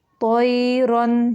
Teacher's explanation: وَأَرْسَلَ، را موٹا ہے، وَأَرْسَلَ عَلَيْہم، میم کو صرف ظاہر کریں گے، یہاں پہ بھی اظہار شفوی ہے۔ طَیْرًا، تو موٹا ہے اور یائلین ہے، نرمی سے اس کو پڑھیں گے